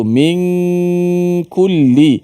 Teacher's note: nun bertemu dengan kaf, ada ikhfa-nya, gunnah di situ